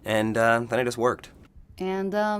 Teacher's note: did pronounce the D he linked it to the next word beginning with a vowel